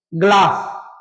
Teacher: ग का ऐसा प्रोनाउंसिएशन करना है कि अ नहीं आए। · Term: हलंत